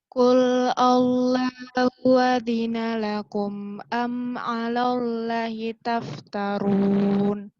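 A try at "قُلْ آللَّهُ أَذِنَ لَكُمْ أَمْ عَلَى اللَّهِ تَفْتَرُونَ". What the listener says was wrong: Ini panjang tadi, karena ada bendera ini. Ini panjang ada benderanya. Ini dia nih harusnya bikinnya alif tegak sih, jadi biar nggak keliru. Ini lumrahnya Allah, ini di sini panjang.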